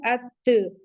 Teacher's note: ता का मखरज चेक करना है तो हम उसके आगे ता के आगे हमजा मफ्तूह, तो हम बोलेंगे जब अत, तो जबान की नोक ऊपर के दरमियानी दांतों की जड़ जिन्हें हम सनाए उलिया कहते हैं, फ्रंट वाला टीथ, वहां पे जाके लगेगी तो अदा हो जाएगा अत।